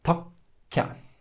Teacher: the stressed syllable, whenever you have these double consonants, has this tiny little break in order to elongate the p or the t or the k.